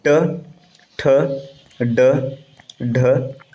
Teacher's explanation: ट वर्ग का होता है मूर्धन्य